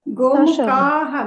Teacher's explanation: ಗೋಮುಖಃ ಅಲ್ಲ, ಗೋಮುಖಾಹ ದೀರ್ಘ ಇದೆ ನೋಡಿ.